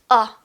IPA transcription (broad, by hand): ʌ